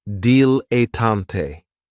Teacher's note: favorites is a dilatant and this word has three syllables and there's kind of like a stress on that first and last syllable